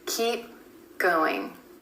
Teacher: Instead of keep going, we're holding that final P sound and going straight into the G.